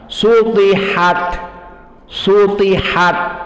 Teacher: Su pas ta harus tebal dan diangkat lisan kita ke atas. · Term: ta mufakhamah